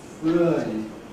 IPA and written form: frə̯i (three)